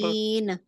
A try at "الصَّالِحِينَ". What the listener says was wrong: نہ نہیں، آخر میں نہ نہیں ہونا چاہیے. مخرج کو چھوڑنا نہیں ہے. नून के मखरज से परे नहीं अपनी जुबान हटानी है।